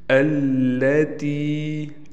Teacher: تا کو کھینچیں گے ہم اس لیے کہ تا کے بعد یا ہے اور یا ساکن ہے، یا ساکن سے پہلے زیر آ گیا، حروف مدہ کی ہونے کی وجہ سے اس کو ہم ایک الف کے برابر کھینچیں گے۔